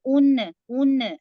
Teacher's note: अब यहाँ हम उन, उन नून की आवाज को जाहिर कर रहे हैं, जिसको कहा जाएगा इजहार